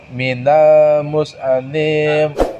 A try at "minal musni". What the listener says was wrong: Minal musni. Karena gini. Sod punya sifat sofir. Sofir apa? S-nya itu harus ada. Minal musni.